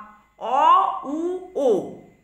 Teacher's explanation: অ উ ও এই স্বরধ্বনি উচ্চারণের সময় ঠোঁট কুঞ্চিত হয়, তাই এগুলি কুঞ্চিত স্বর।